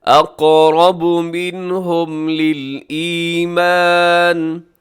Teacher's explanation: را بھی موٹا پڑھا جائے گا کیونکہ را کے اوپر حرکت ہے، اسے اقرب نہیں پڑھنا، اقرب بلکہ اقرب، منہ بھر کے موٹا کر کے پڑھیے گا، اقرب منہم للایمان۔